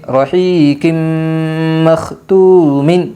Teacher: یمن کے 4 حرفوں میں سے میم آئی ہے، اس لیے دو زیر تنوین کو غنہ کے ساتھ ملا کر پڑھے گے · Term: ادغام مع الغنہ